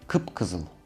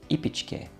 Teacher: we add the sound «p» to the first vowel of the word